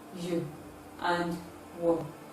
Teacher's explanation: These are sounds that are also referred to as a semi-vowel because there is a free flow of air during their production and there is no obstruction. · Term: approximants